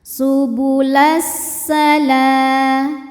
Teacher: Lalu ada hukum namanya alif lam syamsiyah. Sebab alif lam menghadapi huruf syamsiyah yaitu sin, maka alif lam tidak kita baca atau disebut dengan idgham syamsi.